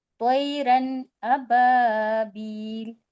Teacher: نون کو ہم ظاہر کر کے پڑھیں گے، بلا جی غنہ کے. بلا جی غنہ کے پڑھیں گے تو ہم جی نون کی آواز کو ظاہر کریں گے. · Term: اظہار